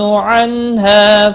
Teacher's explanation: نون ساکن کے بعد ہا آیا ہے، اظہار ہلکی ہوگا، گنہ نہیں کریں گے۔ الف مدہ بھی ہے، ہا ایک الف کے برابر کھینچ کر پڑھیں گے۔